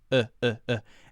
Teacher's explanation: the schwa sound is a very relaxed vowel sound that's like this uh